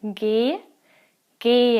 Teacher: when you have an H after a vowel as here again the H itself is not pronounced it just makes the vowel sound a bit longer